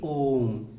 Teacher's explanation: दीर्घ से भी ज़्यादा समय अगर लगता है किसी वर्ण को उच्चारण करने में तो वो प्लुत स्वर कहलाता है।